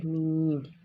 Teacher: ऐसे ही जो मीम है वो दोनों होंठों के खुश्क हिस्से से अदा होता है